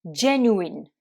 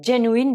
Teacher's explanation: Hein, genuine, donc là vous accentuez sur la première syllabe et ensuite le U se prononce OU